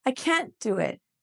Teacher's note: the T from can't and the D from do almost sound like one sound. So all of a sudden you're not sure if I'm saying I can do it or I can't do it.